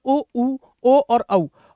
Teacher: पहला होता है वर्तुल या मैं कहूं वृत्त मुखी यानी बोलते वक्त वृत्त जैसा आपका मुंह बन जाए